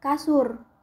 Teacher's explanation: direalisasikan sebagai bunyi U tinggi bawah belakang bundar apabila berada pada silabel tertutup seperti pada kata kasur.